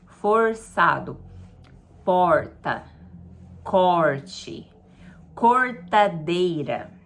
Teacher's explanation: a gente chama de R retroflexo que aquele r que é mais forçado mais puxado